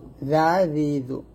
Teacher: আর জাল জিব্বার আগা উপরে দাঁতের আগে লাগবে, নিচে লাগানো যাবে না, উপরে দাঁতের আগায় পাতলা করে।